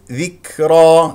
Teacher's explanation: والكاف ساكنه فيها همس لطيف ذكرى لا تقول ذكرى هذا مبالغ فيه والراء مفخمه لانها مفتوحه